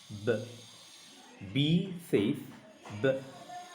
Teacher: যেমন আমরা প্রথমে বলতে পারি a সেফ আ, আ। বি সেফ ব, দুইটা ঠোঁট একত্র করে একটু হালকা প্রেশার দিয়ে ব।